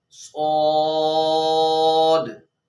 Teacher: हरूफ मुस्तालिया में ये हर्फ आता है जिसको मोटा पढ़ा जाता है, और हरूफ सफीरिया में भी ये हर्फ आता है, तो इसलिए यहाँ पर सीटी भी निकालनी है और हर्फ को मोटा भी पढ़ना है, पुर पढ़ना है। सौद, इसको सुवाद नहीं पढ़ना, वाव नहीं मिला देनी